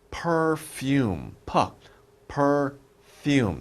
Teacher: p your lips are together f your lips are not together your teeth are on your bottom lip